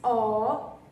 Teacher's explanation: a sílaba mais forte é o ó.